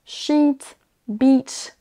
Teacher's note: Sheet, beach, là vous entendez, c'est un I long. On traîne un tout petit peu sur la syllabe.